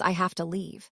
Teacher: The have weakens and to almost vanishes.